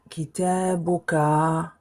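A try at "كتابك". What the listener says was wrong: Ne prolonge pas. Bouka ou ka. Kita, on arrive à la fin, on va mettre damma plus ka. Kitabuka. Kitabuka.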